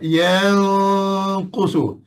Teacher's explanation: Nun ke hidung, qaf di mulut. Itu cara kita dengung ikhfa.